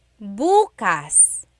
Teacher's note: If you say bukas, bukas, emphasis is on the first syllable, that means tomorrow.